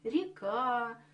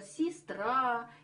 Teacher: в безударном положении у нас произносится и